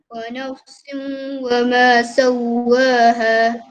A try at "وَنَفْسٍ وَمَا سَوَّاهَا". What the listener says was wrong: Okey, muncung mulut sikit sebab huruf waw.